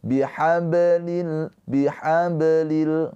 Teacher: Cara bacanya bnya ini dipantulkan dengan pantulan ringan sambil mengalir. Mengalir bihablil bihablil gitu ya. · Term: qalqalah sugro